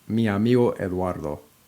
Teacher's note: the words in Spanish tend to link together, in particular, when one word ends in a vowel and the next one begins in a vowel